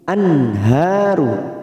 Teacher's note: nun sukun bertemu ha, namanya bacaan idhar halqi, dibaca jelas tanpa mendengung